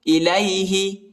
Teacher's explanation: ہا کو کھینچنا نہیں ہے